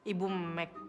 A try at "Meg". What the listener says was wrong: Dengan G, bukan K. Meg.